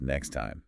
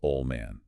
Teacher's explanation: if a T or D is sandwiched between two other consonants, it just disappears because it's too much work to stop the air flow. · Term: T and D deletion